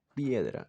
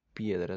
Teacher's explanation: Por eso es que la i y la e, como le digo, la i viene a ser una vocal cerrada y la e una vocal abierta. Por eso es que son una sola sílaba porque están juntas y eso es un diptongo.